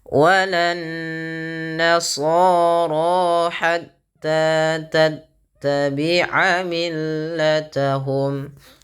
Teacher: tahan bunyi suara nunnya karena dia gunnah